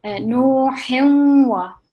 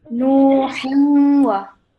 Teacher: when we're joining a tanween sound with the waw, which carries the shadda, waw mushaddad, we're going to pause slightly on it, okay? And get a bit of emphasis to it.